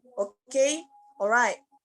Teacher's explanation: items such as okay and alright with falling intonation.